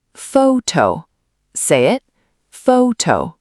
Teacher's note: The word photo. The stress is on the first syllable, fo-to, not photo.